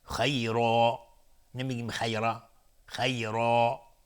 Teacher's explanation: خیرا به مقدار 2 حرکت باید مد داده بشه. خیرا که مشخص بشه بعدش الفه. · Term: مد عوض